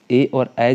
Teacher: ए और ऐ जो होते हैं वो कंठ और तालु से बोले जाते हैं।